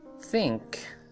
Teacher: Think is an example of a word with voiceless th sound. The vibrations in the vocal cords determine if a particular sound is voiced or voiceless.